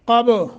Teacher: من قبل، نون ساکن کے بعد قاف حروف اخفا میں سے یہاں اخفا کریں گے۔ قب، قاف کو موٹا، با پہ قلقلہ